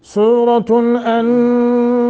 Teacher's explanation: سورۃ انزلناہا، ان نون ساکن ہے اور بعد میں زا ہے حروف اخفاء میں سے۔ انزلناہا کھڑی زبر ہے نون کے اوپر اور آگے ہا کے آگے الف ہے، دونوں کو ایک ایک سیکنڈ یا ایک ایک الف کے برابر لمبا کریں گے۔ · سورۃ، نون تنوین کے بعد حمزہ ہے، اظہار کر کے پڑھیں گے۔